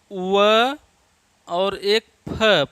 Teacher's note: दंत ओष्ठ, दांत और ओठ से उच्चरित होते हैं, तो दंतोष्ठ कहेंगे इसको, दंतोष्ठ, दंतोष्ठ हैं ये।